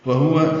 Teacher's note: وہو، جلدی پڑھنا ہے، دونوں واؤں کو ہوٹھوں کی نا تمام گلائی سے ادا کرنا ہے